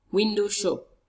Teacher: It has its stress on the first syllable of the first word.